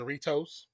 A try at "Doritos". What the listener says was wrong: I'm just a little upset that you pronounced it with the J, Doritos. The J sounds like the J sounds like an H.